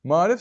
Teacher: Yazılışı və deyilişi fərqlənir. A-lardan biri düşdüyü üçün kəmiyyət fərqi yaranmışdır